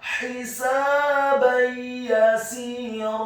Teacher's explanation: Huruf sin-nya dibaca fathah 2 harokat karena setelahnya ada alif. Kemudian huruf ba-nya dibaca tipis dengan harokat fathah tanwin bertemu dengan huruf ya yang fathah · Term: idgham bil gunnah